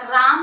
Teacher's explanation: र म्हटला तेव्हा माझा जिभेचा टच टाळूला झाला र स्पेसिफिक दाब माझ्या जिभेने तिथे दिला आणि मी जेव्हा म · मी जेव्हा म म्हटला तेव्हा माझ्या ओठ माझे बंद झाले म एक स्पेसिफिक व्यब्रेशन एक कंपन तिथे निर्माण झाले आपण म्हणतो